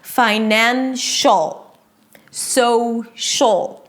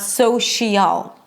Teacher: It's not 'finan-shial', you don't hear two vowels. The SH and the L connect and it feels like there is nothing in the middle there. It's like they're best buddies and they don't want anything to hold them away from each other.